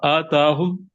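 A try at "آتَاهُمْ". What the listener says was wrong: آتاہم، نہیں نہیں کہنا نا، الف کو چھوٹا رکھے نا، آتاہم،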